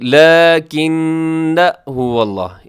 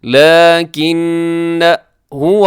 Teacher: جی لیکن هو اللہ، اسے لیکننا نہیں کرنا، اگرچہ اس کے ساتھ الف ہے لیکن الف کے اوپر چھوٹا سا زیرو لکھا ہوا ہے تو آپ نے الف کو نہیں پڑھنا